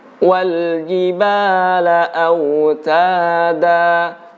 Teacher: huruf Jim tidak ada udara yang keluar